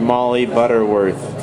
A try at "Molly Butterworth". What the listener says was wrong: You say my name wrong, it's hard to repeat it. Because the vowels are hard in a different place. It's just Molly Butterworth. Molly Butterworth, it's softer. But you do an sound in the surname, it's unpleasant.